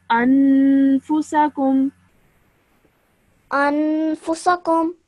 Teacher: you hold that nasal sound in your nose for around 2 seconds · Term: gunna sound